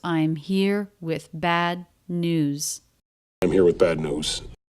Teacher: Here, bad, and news, all stressed, all a little bit longer. I'm and with flatter, although we don't have any reductions here.